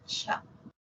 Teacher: la africada inicia como oclusiva cierra como fricativa termina como fricativa y es la palatal sorda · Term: africada palatal